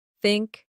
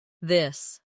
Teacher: For think, it's soft. For this, it's voiced. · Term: th sound